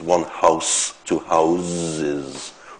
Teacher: What happens here is that you add the [z] at the end. But the final consonant voices.